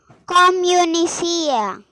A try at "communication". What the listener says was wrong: Communicio. No, there is one, this word, this one you missed it. C-A-T. Communicacio. Communicacio. So, this information and communication I just wrote so that you to understand the pronunciation of this one. Okay, so when you have T-I-O-N together, pronunciation will be C-O. When you have T-I-O-N, pronunciation will be C-O.